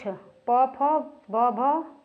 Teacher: प फ ब भ होता है ओष्ठ व्यंजन